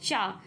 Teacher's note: चा जो है हमारा तालव्य में आएगा